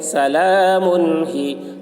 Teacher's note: تنوین کے بعد حروف حلقے میں سے ہا آ رہا ہے، اس لیے تنوین کو ظاہر کر کے بلا غنہ کے جلد پڑھیں گے، اس کو اظہار کہتے ہیں.